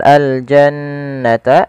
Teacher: ada Nun berharakat tasdid ini kita hukumi dengan bacaan gunah